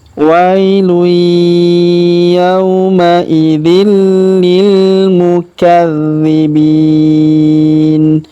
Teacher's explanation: Yauma idzil, tanwin in, huruf dzin bertemu dengan huruf li berharokat tasdid maka tanwin ini ya, huruf dzinnya melebur masuk ke huruf li, kita tahan dan tekan ya. Wailu yauma idzil lil mukadzibin, huruf dzi kita tahan dan tekan karena berharokat tasdid.